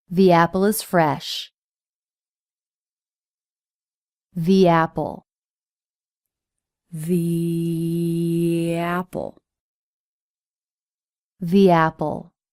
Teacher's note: We use this in the same situation, where there's an ending vowel and a beginning vowel. And we use a y or w sound to connect the vowel sounds. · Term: glide consonants